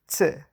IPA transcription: t͡s